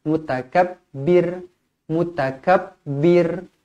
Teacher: mutakabbir ro dibaca nipis kerana sebelumnya berbaris bawah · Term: ra dibaca nipis